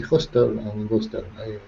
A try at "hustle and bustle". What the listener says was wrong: Hustle and bustle. So in this respect, we do not say the T. The T is silent. Hustle and bustle.